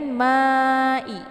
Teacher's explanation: dibaca panjang boleh 4 atau 5 harakat harus konsisten dengan nafas kemudian Ma dibaca panjang Karena di sini ada Mad Thobi'i sesudahnya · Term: mad wajib muttasil